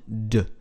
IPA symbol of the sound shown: d